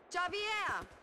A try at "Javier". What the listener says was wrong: It's Javier. It's pronounced like an H. Javier.